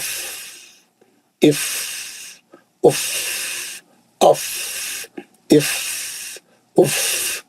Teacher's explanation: तो आप लोग सुनाए, आपका फा बिल्कुल सही होना चाहिए, आवाज नहीं आना चाहिए, खाली होठों के पीछे से हवा निकलने की आवाज होना चाहिए